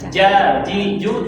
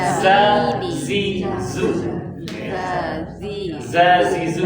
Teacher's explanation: ini jim dari lidah bagian tengah kalau za ujung lidah